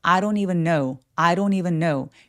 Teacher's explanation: I don't even 하면서 얘가 연음이 돼서 돈의 n과 연결이 돼요. I don't need처럼이에요.